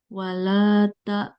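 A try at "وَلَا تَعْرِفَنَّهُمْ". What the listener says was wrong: Lamnya nggak panjang. Wala ta'rifannahum nggak panjang.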